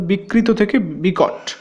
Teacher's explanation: ত হয়ে গেল ট, এটা হলো মূর্ধন্য ভবন